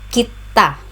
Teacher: The stress is on the second syllable ta, kita.